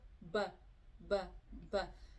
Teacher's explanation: ये अंदर के जो होंठ होंगे वो आपस में मिलेंगे, ब ब। और जब मीम पढ़ेंगे तो ये बाहर के होंठ है वो आपस में मिलेंगे, मीम मीम मीम।